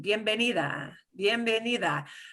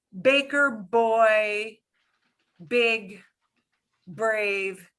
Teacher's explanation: And that means that it's an explosive B in English. It won't be an explosive B in Spanish. It'll be super, super soft. You should hardly feel any breath coming out of your hand.